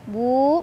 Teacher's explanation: mad tabi'i karena ada waw sukun sebelumnya dhammah, dibaca panjang dua harokat.